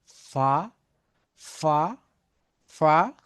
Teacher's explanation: উপরের দাঁতের অগ্রভাগ দিয়ে নিচের ঠোটের অগ্রভাগ মানে আগার দিকে স্পর্শ করতে হবে।